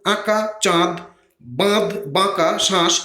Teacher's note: অবশ্যই এই বিষয়টি মনে রাখতে হবে, চন্দ্রবিন্দু হলো অনুনাসিক বর্ণ। চন্দ্রবিন্দু চিহ্ন বা প্রতীকটি পরবর্তী স্বরধ্বনির অনুনাসিকতার দ্যোতনা করে, এজন্য এটিকে অনুনাসিক ধ্বনি এবং প্রতীকটিকে অনুনাসিক প্রতীক বা বর্ণ বলে, যেমন আঁকা, চাঁদ, বাঁধ, বাঁকা, শ্বাস ইত্যাদি।